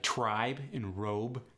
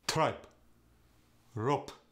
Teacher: the B sound goes to the P sound especially at the end of words